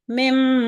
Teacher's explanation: तो उस सूरत में जब हम मीम का गुन्ना करेंगे तो हम हमारे दोनों होठ आपस में मिल जाते हैं और नाक से आवाज जारी होती है · جیسے کہ ایک لفظ ہے مما، تو اس کو ہم ادا کریں گے تو آپ اپنے ریپیٹ کریں اپنے اپنے جہاں آپ لوگ ابھی تشریف رکھتی ہیں، تو آپ اس چیز پہ غور کریے کہ آپ کے ہونٹ بند ہوں گے، ناک سے آواز جاری ہوگی مم، تو دونوں ہونٹ ملیں گے. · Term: मीम गुन्ना, میم غنہ